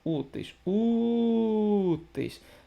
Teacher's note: a sílaba que se prolonga é o u se é o u então é a penúltima sílaba paroxítona